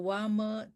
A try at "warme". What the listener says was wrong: The warme thee, R-nya jangan ditelen. Kalau minum teh boleh ditelen, R-nya nggak boleh ditelen.